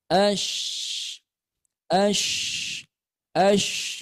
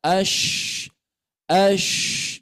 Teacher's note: Keluarnya huruf shin ini dari tengah-tengah lidah kita ya.